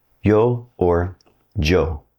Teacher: Through the majority of the Spanish-speaking world, it's going to sound somewhere between an English Y and an English J.